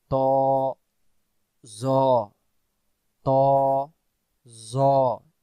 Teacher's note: জ অক্ষর জিহ্বার আগা থেকে মোটা করে পড়তে হয়